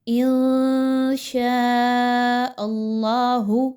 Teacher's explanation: نون ساکن کے بعد شین کا حرف آ گیا ہے تو آپ نے یہاں پر اخفا کرنا ہے، آواز کو ناک میں لے کر جانا ہے اور غنہ بھی کرنا ہے۔ شاء، یہاں پہ دیکھیں تو مد موجود ہے، اس مد کو آپ نے 4 سے 5 الف کے برابر لمبا کر کے پڑھنا ہے۔